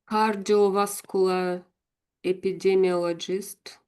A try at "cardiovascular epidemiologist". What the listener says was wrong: Yeah, I liked how you said that. That was really good.